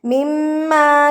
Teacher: मीम के ऊपर जब तशदीद आती है तो मीम पे गुना किया जाता है। मीम मुशद्द पर गुना किया जाता है।